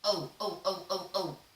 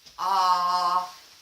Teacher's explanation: in the case of ah your cheeks are relaxed opposite ah in the case of Oh your lips are rounded Oh like a kiss in the case of ah your lips are neutral they're doing nothing at all don't move your lips ah now